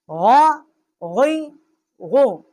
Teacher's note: اس کا مخرج جو ہے ادنائی حلق جو منہ کی طرف والا حلق کا حصہ ہے وہاں سے اس کا مخرج ہے غین کا